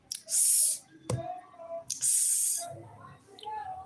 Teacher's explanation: When you produce s, you produce with alveolar ridge and the air slitting out as in fricative. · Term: voiceless alveolar fricatives